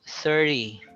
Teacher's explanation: when you reach 30 that's a soft d already it's not an obscure t it's a different t sound